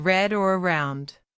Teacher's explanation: Example, the R sound in English like in red or around. Your tongue curls slightly back, not flat like in some other languages.